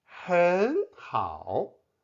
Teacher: The third tone 很 changes to the second tone 很 because 好 is also a third tone syllable. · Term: double third tone change